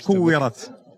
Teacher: لا، الترقيق لأنها الراء سبقت بكسر. هذا حكم عند ورش.